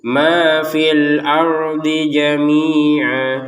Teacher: Ma fi. Tapi karena fi-nya ini bertemu dengan hamzah maka hilang panjangnya.